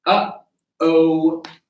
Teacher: when we have that uh-oh, you're feeling a double click, a double glottal. Again, this can be very helpful for chord closure because it is chord closure.